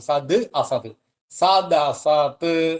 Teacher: പദങ്ങളഉണ്ട് സത്ത് എന്നൊരു പദം അസത് എന്നുള്ള പദം അപ്പോ സത്ത് അസത് കൂടുമ്പോൾ സത്ത് എന്നുള്ള തകാരം ദ എന്നാകും · സത് അസത് കൂടുമ്പോ സത്ത് എന്നുള്ള തകാരം ദ എന്നാകും. സത് അസത്, സദസത് എന്നായി.